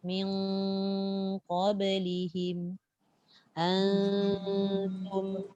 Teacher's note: digabungkanlah bunyi daripada suara dengung kat hidung dan sebahagian kecil suara keluar daripada mulut.